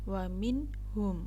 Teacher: harus dibaca jelas, tidak boleh memasukkan huruf nun kepada ha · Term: idhar syafawi